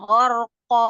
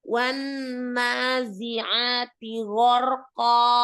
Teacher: Tebal, tapi bibirnya nggak ikut terlalu monyong ya.